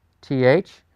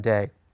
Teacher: doggish Lane a back in there the dot in the middle it's going to give us not the soft sound but the hard D sound